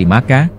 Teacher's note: Huruf Ba dan Mim, memiliki pronunsiasi yang sama, yaitu merupakan kata bilabial, atau cara pengucapannya dengan menutup bibir.